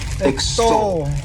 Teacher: this word has two syllables and the stress is on that second syllable